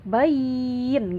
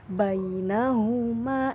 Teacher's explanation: cara bacanya tuh nggak berhenti, bukan bain, nggak begitu kan, tetapi lanjut bainahuma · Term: sifat lin